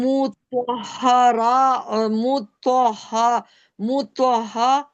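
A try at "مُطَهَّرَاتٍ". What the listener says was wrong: हाँ को मत खींचे। हाँ को 2 बार पढ़ना है ना, पहले तो को हाँ से मिलाएं।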